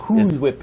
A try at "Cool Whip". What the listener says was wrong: It's Cool Whip. Why are you putting an emphasis on the H?